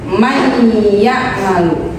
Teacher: jadi nunnya tidak dibaca tapi dia masuk atau melebur kepada huruf yang kedua yaitu huruf ya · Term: idgham